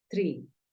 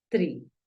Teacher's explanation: la doble E tiene un sonido como una I, pero es un poco más alargada